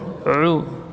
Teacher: U di sini, ya, makhrajnya min wasatil halqi, dari tengah tenggorokan.